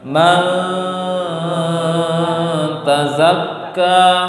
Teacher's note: Menyamarkan bunyi nun sukun diarahkan ke makhraj ta. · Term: dengung